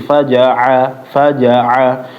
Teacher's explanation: huruf ainnya dijelasin lagi faja'a fajaa jangan kayak huruf hamzah